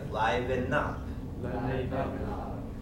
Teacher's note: The N and the U get pushed together.